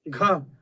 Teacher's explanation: ख बोलोगे तो ऐसा लगेगा कि इस पर हवा लग रही है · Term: महाप्राण